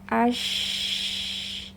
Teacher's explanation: Sifat yang spesial ada hanya di huruf shin adalah tafashi, yaitu menyebarnya suara pada huruf shin dari makhrajnya sampai suaranya menabrak bagian dalam dinding gigi seri atas dan bawah. Ash ya, dan tafashi ini berbarengan dengan sifat hamas dan rohwa yang ada pada huruf shin ya.